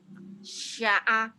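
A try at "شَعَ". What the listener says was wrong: Enggak ada yang panjang. Sya'a. Sya'a pendek, gak ada yang panjang.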